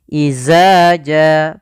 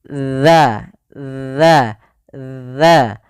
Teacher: Makhraj daripada huruf zal adalah ujung lidah kita menempel dengan gigi sari atas.